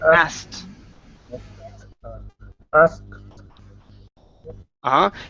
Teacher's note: we need to add the T sound. You're ending with a K. You're saying ask.